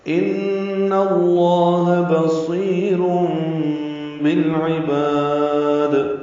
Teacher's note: ان میں نون مشدد پہ غنہ ہے اور نون کی زبر کی وجہ سے لام اس میں جلالہ پر ہے.